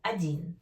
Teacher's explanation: O sounds like A when unstressed.